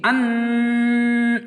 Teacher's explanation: گنہ یعنی ناک کے اندر میں آواز کو کھینچ کے پڑھنا